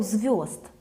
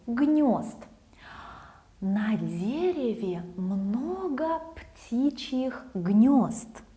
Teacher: in modern Russian, ye often switches to yo